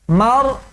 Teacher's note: آخر میں حمزہ ہے تو آواز رک جائے